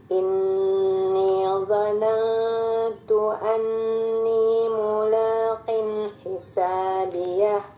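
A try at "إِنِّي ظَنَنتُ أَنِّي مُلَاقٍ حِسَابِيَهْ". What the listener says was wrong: mula enggak, A-nya jelasin. La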